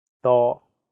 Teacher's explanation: The first character is in high flat tone, first tone.